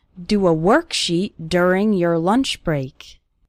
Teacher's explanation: the letter o in the word work and the letter u in the word during they both have this R sound